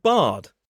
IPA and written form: bʌd (bud)